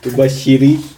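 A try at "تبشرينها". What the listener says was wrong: تبشرینہا. ہاں کو نیگلیکٹ کیا. تبشرینہ کو دیکھیں.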